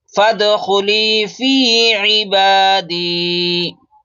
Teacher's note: फा को डायरेक्ट दाल में मिलाएंगे और कलकला करेंगे, क्योंकि दाल हुरूफ कलकला में से है।